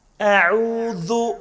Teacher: حمزہ چھُ الف حرفو حلقی کَتہِ نِہایت الحلق پٮ۪ٹھ چھُ نیران یعنی اقصى حلق باریٖک چھُ پَرُن بیٚیہِ اعوذ عوذ عین چھُ وسطِ حلقہٕ پٮ۪ٹھ